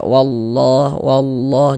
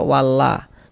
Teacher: Maka lafaz Allah huruf lam jalalahnya dibaca tebal dibaca tabkhim